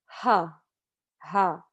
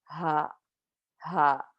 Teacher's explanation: H comes from the bottom of your throat and if you find that little dip at the bottom of